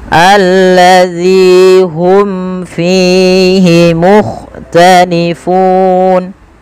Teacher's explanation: mim mati bertemu fa, ada idhar syafawi, jelaskan mimnya